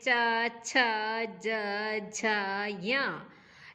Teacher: ऐसे ही चवर्ग के जितने भी वर्ण हैं च छ ज झ य, इन सब के उच्चारण में तालु को स्पर्श, जिह्वा तालु का स्पर्श करती है